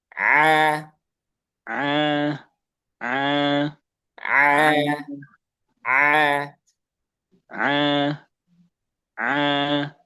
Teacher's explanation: Nah, huruf ain dan ha dia tidak masuk hidung. A kalau bisa sambil dipencet itu a di tengah tenggorokan.